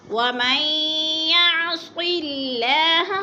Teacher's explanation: لفظ صاد کے نیچے زیر ہے تو اللہ باریک پڑھا جائے گا، بلکہ پر نہیں پڑھا جائے گا، باریک پڑھا جائے گا۔